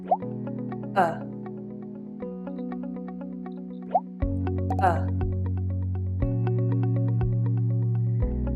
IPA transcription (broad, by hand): ə